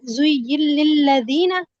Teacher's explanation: نون کا لام میں ادغام